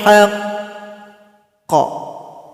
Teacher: sini ada huruf qalqala huruf qaf dan dia bertasdid cara berhentinya sukunkan huruf qafnya kemudian tekan bacaan kita tunggu 2 detik baru dipantulkan